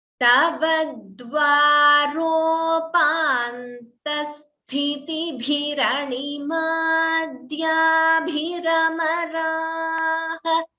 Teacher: Here, sthitibhi, these three letters, we should be careful that only thi is mahaprana, next ti is alpaprana, and bhi is mahaprana. We have to be very careful while chanting that because it's very easy to interchange as they are so close to each other.